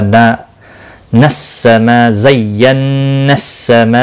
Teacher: मद्दे मुत्सिल है, 4 अलिफ के बराबर खींच कर पढ़ेंगे